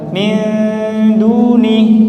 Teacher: ketika ikhwa nun sukun ketemu dal, posisikan lidah itu di dekat dengan makhraj dal. Min duni. Nah, sehingga ketika ikhfa posisi lidah itu sudah dekat dengan makhrajnya.